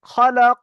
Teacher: আলিফ মাদ্দাকে একলি পরিমাণ টান দিয়ে পড়তে হবে